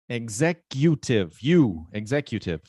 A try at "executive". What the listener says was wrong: But that's not the stressed syllable. So I stressed it so that you would pronounce it right, but it's executive.